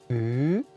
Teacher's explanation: U, les lèvres sont en avant. La bouche est un peu ouverte et arrondie. La langue est en avant, elle touche les dents du bas. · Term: Le son U